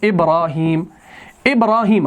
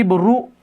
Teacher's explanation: را کے اوپر زبر ہے تبھی ہم را ابرا آ کر کے اس کو کھینچتے ہیں